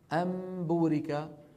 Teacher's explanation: نون ساكنة قلبت إلى ميم ثم أخفيت الميم عند الباء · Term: إخفاء الميم المقلوبة